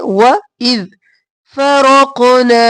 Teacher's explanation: رو موٹا قاف موٹا، روق اور پھر قاف قلقلہ، رقنا نہیں کرنا.